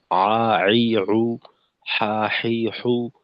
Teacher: আইন এবং হা এর মাখরাজটা হলো হলকের মধ্যখান।